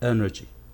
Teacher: the stress is on the first syllable the first syllable is pronounced stronger